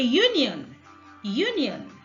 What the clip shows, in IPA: ˈjuːnjɪən